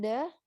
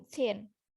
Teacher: one of these is voiced the in the, and one is unvoiced th in thin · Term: two th sound